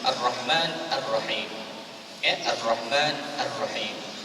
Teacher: untuk mengenal hukum alif lam syamsiyah ini, dia tidak ada bunyi al-al-nya.